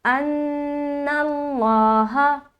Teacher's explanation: نون میں نون مشدد کا غنہ ہوا، لفظ اللہ کا لام کو موٹا پڑھا قاعدے کے مطابق، اور ہا زبر ہا۔